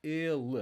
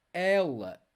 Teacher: Notice ele, the E sound, ele, it's closed vowel. Ela, open E. Ela, ele, ela.